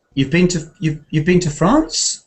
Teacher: using rising tone to make a question, although really that's not typically English